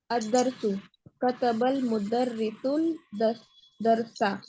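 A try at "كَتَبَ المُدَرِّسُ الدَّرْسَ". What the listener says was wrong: सुल नहीं होगा, सुदरसा। लाम तो खाली है, अलिफ भी खाली है, उसको स्किप करेंगे ना, तो कहाँ जाके मिलाएंगे? यहाँ दाल के ऊपर।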